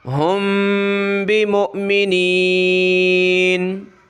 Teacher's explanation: میم ساکن ہے، اس پہ اخفا کیا جاتا ہے، ناک میں آواز چھپائی جاتی ہے